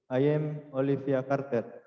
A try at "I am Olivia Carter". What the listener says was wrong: Am Olivia Carter ya. Bukan I am tapi am ini ya.